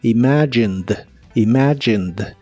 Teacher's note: imagined es similar a la forma del presente solo que ahora termina con e d aunque no pronuncias la e solamente la d